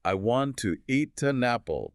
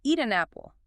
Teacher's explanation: the speaker literally pushes the consonant over to become the start of the next word